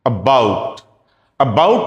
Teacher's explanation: कई बार तो ये एक बहुत ही शॉर्ट और वीक ए के रूप में मेरे सामने आया, जैसे अबाउट। अबाउट, अबाउट में अ जो है, हम कह सकते हैं कि छोटा अ है, पर थोड़ी ड्यूरेशन के लिए बोला गया। पर उसके साथ साथ हमें यह भी पता चलता है कि अबाउट में जो अ है उसकी इतनी सिग्निफिकेंस नहीं है।